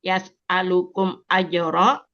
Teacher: mim sukun bertemu hamzah, izhar syafawi, dibaca dengan jelas